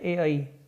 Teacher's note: कंठ तालु के अंतर्गत दो ही वर्ण आते हैं, ए आई